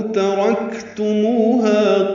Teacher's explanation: ترکتموها میں تا باریک ہے، را پر ہے، کاف باریک ہے، کاف ساکن ہے، اس پہ ہمس ہوگا